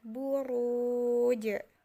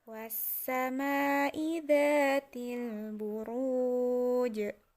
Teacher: Itu ru ketemu dengan wawu sukun dan terakhirnya itu jim, maka kita akan muwakofkan jimnya itu menjadi mati dan wawunya ini kita dibaca panjang ya, buruj. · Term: mad arid li sukun